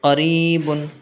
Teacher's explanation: یا ساکن سے پہلے کسرہ ہے اس لیے یا مدہ ہوگا، یا مدہ کو ایک الف کے برابر لانگ کر کے پڑھنا ہے